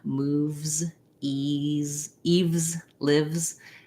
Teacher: keep the voice on and move right from your v to your z